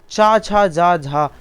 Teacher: यहाँ पे चा छा जा झा ये स्पर्श संघर्षी हैं